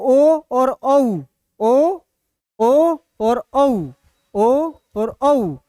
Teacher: ओ और औ कहाँ से हो रहा है? कंठोष्ठ से हो रहा है।